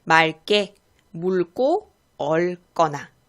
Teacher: 그래서 기역의 앞에서는 기역으로 발음하는 것이 아니라 리을로 발음합니다.